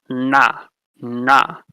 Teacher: Retroflex, you curl your tongue back and touch the top of your mouth